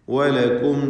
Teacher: വാവ് എന്താണ് ചുണ്ടുകളിൽ നിന്ന് തന്നെ വരണം. ചുണ്ട് വൃത്താകൃതിയിലാക്കിക്കൊണ്ട് വാവ് ഉച്ചരിക്കുക